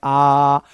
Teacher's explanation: विवृत्त स्वर में मुंह पूरा खुल रहा है। जितना मैक्सिमम खुल सकता है, आप इसको ऐसे बोल सकते हो आ ऐसे नहीं इसको बोलना है।